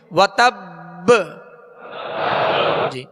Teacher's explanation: اور اس کو جب یہاں وقف کریں گے مشدد حرف پر تو اس کو مزید جو ہے قلقلہ واضح ادا ہوگا، یعنی وتب با کی آواز واضح ہوگی. وتب حرکت نہ پڑے بلکہ ساکن ہی ادا ہو اور با کی آواز جو ہے لوٹ کر آئے، یعنی اس میں جنبش ہو